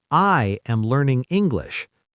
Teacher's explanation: Stress the word I. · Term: power word